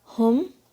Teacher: ہا کی آواز حلق کے سب سے نیچے سے آئے گی، ہم، ٹھنڈی سانس کی طرح آواز آئے گی اس کی.